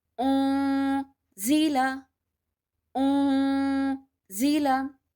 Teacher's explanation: I'm making a sound in my nose. I'm not touching my tongue anywhere in my mouth, and I'm holding the sound of ikhfa, and I'm saying oh, zila, oh, zila.